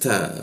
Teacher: Posisinya ta itu adalah ujung lidah bertemu gigi ada bocor tipis ta. Seperti itu.